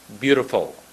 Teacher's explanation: Don't make a W instead of an L.